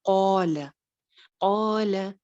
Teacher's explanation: قاف کیونکہ موٹا ہے اور موٹے حرف کے ساتھ کا الف ہمیشہ موٹا پڑا جاتا ہے تو لہٰذا اس کا الف بھی موٹا ہوگا.